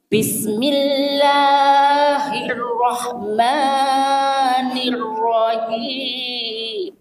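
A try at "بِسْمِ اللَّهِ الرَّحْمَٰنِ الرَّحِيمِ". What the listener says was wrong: Ya, sedikit dikurangi panjangnya Ibu. Bismillahirrahmanirrahim. Ya, latihan panjang pendek.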